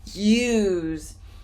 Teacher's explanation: I see the letter S, use, but the pronunciation is a Z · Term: The Z sound